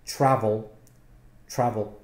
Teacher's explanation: there's two syllables the stress is on the first syllable